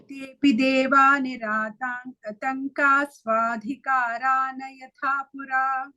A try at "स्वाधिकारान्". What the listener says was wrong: Karana, no. Karan is half.